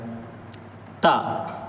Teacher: زبان کی نوک کو اوپر سامنے کے جو دو دانت ہیں ان کی جڑ پہ لگانا ہے